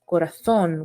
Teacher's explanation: in words such as corazon in spanish it would be pronounced corathon with the th sound